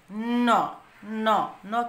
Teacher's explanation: ন, ন, ন কিন্তু আমরা নাকের সাথে বাধাপ্রাপ্ত হয়ে আর দন্তমূলের সাথে চাপ দিয়ে বা দন্তমূলের সাহায্যে এবং জিহ্বার সাহায্যে নাক দিয়ে বাতাস বের করে ন উচ্চারণ করলাম